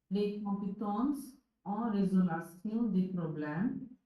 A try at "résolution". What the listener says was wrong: Résolution. Not lation, résolution.